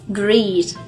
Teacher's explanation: Thế còn từ greet thì các bạn nhớ là nguyên âm của nó chính là âm y dài, có nghĩa là sao, là khi đọc thì chúng ta nhớ là miệng phải kéo căng ra hai bên